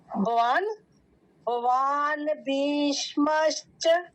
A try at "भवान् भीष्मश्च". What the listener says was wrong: जो अंतिम में है आप वो आधा नहीं करना, पूरा करना